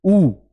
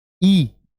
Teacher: उ बोलते समय आगे का जो मुह है मेरा जो ओठ है या होठ है वो गोल हो जाते हैं